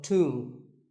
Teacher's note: the B is silent and the O is pronounced with an oo sound.